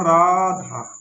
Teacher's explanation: तो हमको पहला स्वर खींचना पड़ेगा। यही दीर्घ है। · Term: प्लुत स्वर